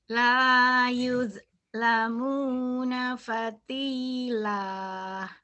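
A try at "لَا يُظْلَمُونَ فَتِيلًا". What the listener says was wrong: Jangan patilah, fatila, jangan ada hanya. Jangan ada hanya ya.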